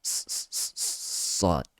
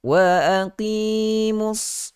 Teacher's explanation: sifat huruf sad itu kita sebut sebagai sifat safir, bergeser, berdesir